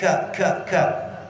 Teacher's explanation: Kalau kop kan di ujungnya ko tuh di pangkal lidah. Ini turun sedikit dari pangkal lidah. Ka. Agak ada anginnya.